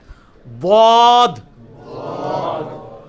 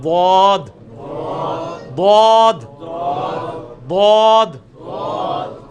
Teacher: ضاد کا آسان ترین طریقہ مخرج کا یہ ہے کہ یہ زبان ہے نا جی, آپ زبان کی جو دائیں یا بائیں کروٹ, کوئی ایک کروٹ, اس کو اوپر کے دانتوں کی جڑ میں لگانا ہے